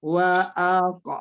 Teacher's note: Bunyi qalqalahnya sedang saja, tidak terlalu keras